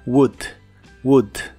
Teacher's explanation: no se pronuncia la O ni la L de esta palabra, solo la U corta y explosiva de en medio